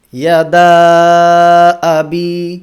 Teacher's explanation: এভাবে 2 আলিফ তথা 4 হারাকা পরিমাণ টেনে আদায় করতে হবে। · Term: মাদ্দে মুনফাসিল